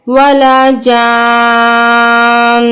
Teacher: اب یہاں پہ بھی ہم نے خیال رکھنا ہے کہ یہ لانگ مد ہے، یہاں پہ ہم اس کو 6 الف کے برابر کھینچیں گے اور نون سے جوائن کریں گے. اور نون پہ غنہ ہوگا کیونکہ نون مشدد ہے، اور وقفی صورت میں بھی نون پہ جماؤ باقی رہے گا، یعنی کہ سختی اور غنہ باقی رہے گی.